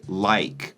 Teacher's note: In my pronunciation and RP, we say like. We have a diphthong, so the I is Ike. It's two vowel sounds in a singular syllable.